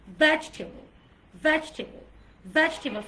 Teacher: টেবলে কিন্তু কোনো স্ট্রেস হবে না